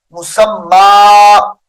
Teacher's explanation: مسمن کا جو وقف ہوگا مسمى میم کو لمبا کر دیں گے